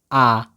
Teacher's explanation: पूरा मुख खुल रहा है तो यह जो है विवृत स्वर है